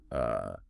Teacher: >> The lips are relaxed, the tongue is flat, and the dead center of the mouth. The jaw is totally neutral. It's just a lazy exhaled uh sound. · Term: The schwah